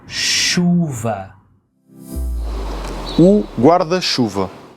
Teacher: It's not ch. No, it's sh.